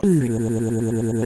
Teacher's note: Nótese que no es precisamente una U española, es como pronunciar la U y la I simultáneamente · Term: U francesa